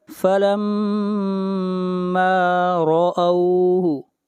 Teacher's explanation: را کو موٹا پڑا جائے گا، را کے اوپر زبر ہے، جہاں بھی را کے اوپر پیش یا زبر ہوگی را کو موٹا پڑا جائے گا، اور جہاں پر زیر ہوگی را کو باریک پڑھیں گے۔